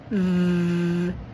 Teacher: You will vibrate and send air out. Make sure you have some vocalization. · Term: V sound